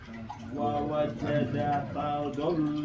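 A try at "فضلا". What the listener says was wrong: Do-nya panjang dulu. Do.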